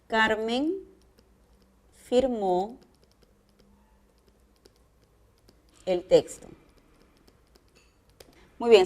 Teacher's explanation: si a mí me preguntan qué tipo de tono presente esta oración yo voy a contestar es descendente